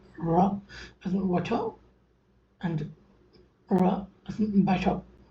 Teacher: It is the tap basically when the back of the tongue goes and touch. Okay, give a very sudden flap to the alveolar ridge · striking the tongue against the roof of the mouth in a single quick moment. It's a very fast moment.